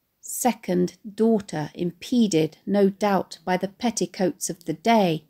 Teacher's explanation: Note the interweaved consonants in these lines of the plosive p, t and d sounds.